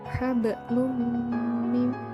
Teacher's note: tanwin bertemu dengan salah satu dari huruf ya nun mim wawu maka membacanya dimasukkan dengan dengung dua harakat atau satu alif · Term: idgham bighunnah